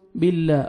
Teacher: اللہ سبحانہ وتعالیٰ کے نام سے پہلے کسرہ آ رہا ہے تو لام کو آپ نے باریک کرنا ہے